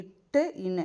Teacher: அடுத்தது இட்டு இன்னு, இது சொல்லி பார்த்தீங்கன்னா இட்டு இன்னு, நாவின் நுனி வந்து அன்னத்தோட நுனியை முட்டுது.